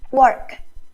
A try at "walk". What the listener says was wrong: No, it sounds more like you're saying work. Walk. Really open up your mouth, and when you're practicing pronunciation, practice it's called the articulation of sound. It means how the sound is made.